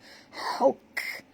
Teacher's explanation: Ha di sini ha pedas dan kaf ini kalau mati kita kena bunyikan hamasnya